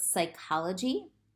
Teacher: when p s appears at the beginning of the word again the p is silent and just the s is pronounced